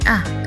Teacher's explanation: Bunyi U tinggi belakang bulat dan bunyi A rendah tengah tidak bulat